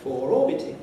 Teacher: I do say four orbiting, and I insert the R between four and orbiting. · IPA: ˈfɔːr ˈɔːbɪtɪŋ